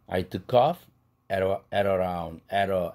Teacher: 그래서 빨간색 세로를 붙여놨을 때는 여기에서 멈춰요. 그렇다면 off 할 때 F 사운드가 at 할 때 모음으로 시작했다 할지라도 링킹 시키지 않죠. 호흡이 있으니까. I took off at around 10.